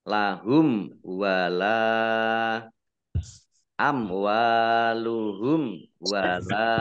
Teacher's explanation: mim sukun bertemu dengan huruf wau juga bacaan izhar syafawi dibaca jelas